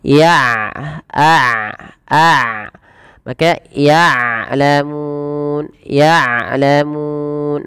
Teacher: jangan sampai dibaca dengan ya'lamun dengan hamzah tapi dengan ain